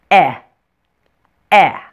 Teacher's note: For the eh, your mouth is a little bit more closed than it was for the short A sound.